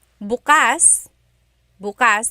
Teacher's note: If you say bukas, bukas, emphasis is on the first syllable